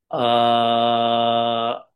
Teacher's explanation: ఆ ఇది రెండు మాత్రల్లో అంటాం. అలానే ఆ ఇది మూడు మాత్రల్లో అంటాం. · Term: ప్లుతం